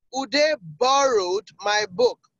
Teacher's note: So borrowed is the one carrying the emphatic stress, the emphasized word.